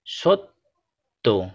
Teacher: তয়ের সাথে জফলা যুক্ত থাকায় এখানেও তটি দুইবার উচ্চারিত হচ্ছে